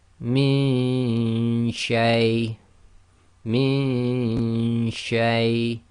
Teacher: And you've got to do the Ghunna and effectively the Ghunna of the noon in your nose, but you cannot have the tongue in the articulation place of the Noon Saakin. It must already be in the correct place to be ready to say the sheen.